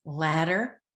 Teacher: the different d sounds in words like ladder where it's a tongue flap